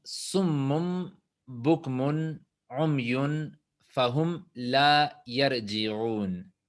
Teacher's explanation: Acá también veremos esa parte que en general, en realidad la palabra es summun, pero en árabe es cuando viene una N como consonante y luego sigue una ba, entonces la N se convierte en un sonido de M